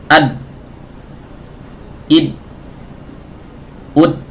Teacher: Berarti huruf dal, huruf syiddah, tidak mengalir suaranya.